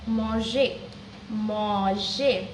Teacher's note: So like the R remains silent. So now in the infinitive form of the regular ER ending verbs, so where we don't sound the R